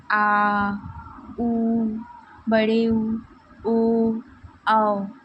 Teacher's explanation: जीभ के पश्च भाग से इसका उच्चारण किया जाता है। आ, उ, बड़े उ, ओ, औ का उच्चारण करने के लिए हम जीभ के पश्च भाग का उपयोग करते हैं। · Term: पश्च स्वर